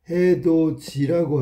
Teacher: 디귿이 형식 형태소 이하고 만나서 지읒으로 바뀌었네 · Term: 구개음화